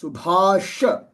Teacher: the middle sound is ba that is the aspirated sound. And then this sha is the second sha which is the which is pronounced with the letter with the tongue at the very back of the pallet.